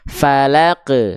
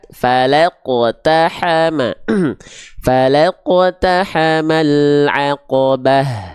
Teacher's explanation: bukan tipis tapi falqu tebal pangkal lidahnya diangkat